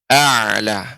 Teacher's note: Kita jaga karena ain ini termasuk sifatnya adalah bainiyah ya, tidak banyak mengalir udara, juga tidak terhenti seperti hamzah